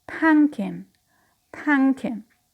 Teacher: The first process is consonant elision. We have the consonant cluster m, p, k within the word, and we omit the p